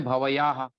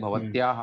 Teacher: लेकिन इसी बात को जब आगे देखें, जैसे भवत्याह आ रहा है, अब भवत्याह में एक तो हम बोले भवयाह और एक भवत्याह, तो दोनों में थोड़ा व का जो उच्चारण है उसमें फर्क पड़ेगा। बाद में आधा अक्षर आने से उस वकार के आकार पर प्रभाव पड़ता है, इसलिए उसको दीर्घ माना जाता है। उसको बोलने में टाइम लगेगा।